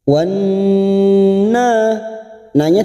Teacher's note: kita dengungkan dan kita tekan selama tiga harakat atau tiga ketuk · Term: nun yang bertasdid